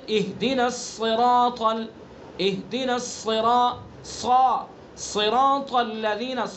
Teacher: صاد کے اندر استعلا صفت لازمہ ہے، یہ تفخیم صفت لازمہ ہے، اگر صاد کو پر نہیں کریں گے تو سین بن جائے گا۔